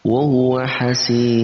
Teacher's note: Lalu di akhir ayat juga terdapat mad arid li sukun, kita baca 2 sampai 6 harokat.